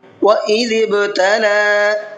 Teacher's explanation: ذال کو نرمی کے ساتھ میں پڑھنا ہے اور با کے اندر قلقلہ کرنا ہے